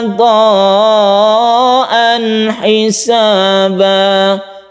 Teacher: Ada dua mat wajib muttasil, yang satunya ini disambut dengan idgham bi gunnah, tanwin bertemu mim, yang berikutnya ini tanwin bertemu ha, ini tidak dengung